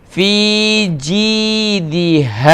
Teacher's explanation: Ha is pronounced from bottom of throat.